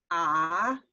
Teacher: notice your tongue is pulled back your tongue is very low